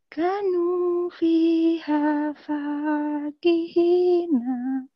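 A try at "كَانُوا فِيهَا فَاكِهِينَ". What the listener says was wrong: Iya, kaknya panjang ya, nama sama naknya pendek. Boleh diulangin?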